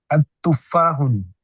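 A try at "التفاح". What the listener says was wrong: अतुफ़ाहु है ना, अलिफ लाम लगाएंगे तो फिर हम तनवीन को नहीं पढ़ेंगे। अतुफ़ाहु, जज़ाकल्लाहु खैरा। आप लोअर एंड कर लेंगे।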